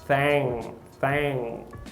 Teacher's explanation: Então, muito cuidado, não tem esse g, não tem esse G. Então, nessa palavra, thing, é o agma.